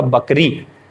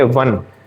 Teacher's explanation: वन बोलते समय दोनों होठ नहीं चिपक रहे हैं। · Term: दंतोष्ठ